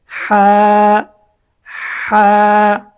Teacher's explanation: আমরা যখন এই জিমের নক্তাটা কেটে দিব তখন এটা হয়ে গেছে হা এর উচ্চারণটা গলাটা একটু চেপে গলাটা একটু চেপে উচ্চারণ করতে হবে